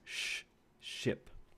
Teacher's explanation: these are alveopalatal, meaning that these are just made behind the alveolar ridge